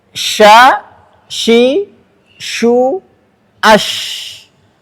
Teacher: Nafas yang terasa di telapak tangan ini yang mengalir saat diucapkan disebut dengan hams